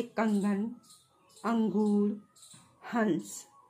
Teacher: अनुस्वार का उच्चारण नाक से होता है